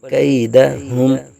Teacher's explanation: یا لین کا قاعدہ بغیر کھینچے بغیر جھٹکا دیے نرمی سے معروف پڑھیں گے